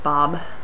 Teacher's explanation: say an M you might end up with a B because your lips are closed but the air can't come through your nose so when you release the lips you get a B